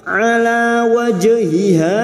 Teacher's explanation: Alif kecil di atas dua harakat kita panjangkan · jim sukun yang mati asli di tengah kalimat qalqala sugra. Jangan lupa dipantulkan wajhiha 2 huruf ha.